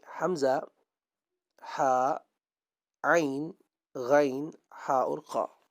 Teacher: یہ وہ حروف ہیں جو انسان کے حلق سے ادا ہوتے ہیں، اور ان کو حلق سے ہی ادا کرنا ہے۔ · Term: حروف حلقی